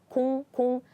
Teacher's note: 공 is kind of ended with ng sound. It's similar to ng sound in English.